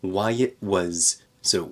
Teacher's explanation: here we have a glottal stop for the T in it